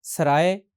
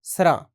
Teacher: हिंदी शब्दों में जब आखिर में य हो तो डोगरी भाषा में य का लोप हो जाता है